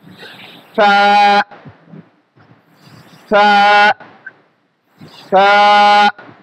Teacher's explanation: ফা একটা নরম হরফ, একেবারে শক্ত করা যাবে না, আবার সিনের মতো উচ্চারণ করা যাবে না। আমাদেরকে কি করতে হবে, ফা উচ্চারণের সময় এই যে সামনে যে 2 দাঁত আছে, এই যে এই 2 দাঁতের আগা এবং জিহ্বার আগাটা আমরা নিয়ে নিব, নিয়ে আমরা সুন্দর করে উচ্চারণ করব।